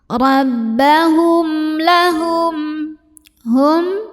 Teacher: Karena ada mim sukun yang menghadapi huruf selain mim dan ba, yaitu lam hurufnya. Maka cara baca mim sukun ini dibunyikan dengan idhar atau jelas bunyi M-nya. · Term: idhar syafawi